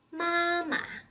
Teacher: has reduplicated syllables meaning two syllables are the same such as the second syllable is always pronounced in a neutral tone